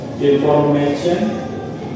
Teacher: The primary stress falls on the third syllable, ma, which contains the diphthong a. The first syllable receives secondary stress.